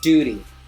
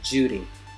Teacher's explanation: British English d versus American English j. For instance, in British English it's duty.